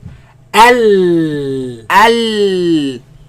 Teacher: my tongue is right after the teeth. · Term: lam